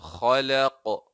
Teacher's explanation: qalqala ugu dambeyso khalaq sax